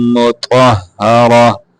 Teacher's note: تا کو موٹا کر کے پڑھیں گے را کو موٹا کر کے پڑھیں گے